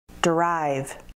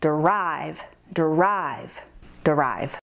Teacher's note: Derive has two syllables, derive, and the emphasis is on the second syllable.